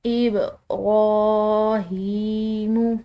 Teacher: را کے اوپر کھڑی زبر ہے، ساتھ میں ہا کے نیچے کھڑی زیر آ رہی ہے، تو ان کو ہم نے کھنچاؤ دینا ہے، لمبا ادا کرنا ہے ، اور یہ لمبا ادا کرنا ایک الف کی مقدار ہے۔